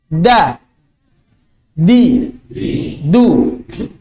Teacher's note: Sebetulnya kalau yang lebih fasih, dalnya bahasa Arab itu ujung lidahnya bukan di langit-langit. Ujung lidahnya menyentuh pangkal gigi seri atas.